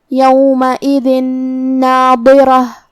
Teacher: کلمت ناظرہ میں نون بھی حروف الادغام بغنہ میں سے ہے تو ہم یہ تنوین کو نون میں ملا کے غنہ اور تشدید کے ساتھ یہ حکم کو ادا کریں گے